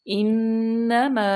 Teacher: نون مشدد، یہاں پہ غنہ کریں گے